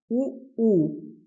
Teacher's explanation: उ ऊ इनका उच्चारण स्थान क्या है? ओष्ठ है